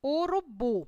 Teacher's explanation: proparoxítona é oxítona última sílaba é tônica por exemplo urubu é a sílaba bu na palavra urubu teve maior intensidade foi pronunciada com mais força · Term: sílaba tônica